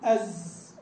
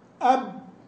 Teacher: أز لو استطاع لو حبيت تطول صوتك به طال امتد معه إن شئت، لكن لما تقول أب وقف تماما وانحصر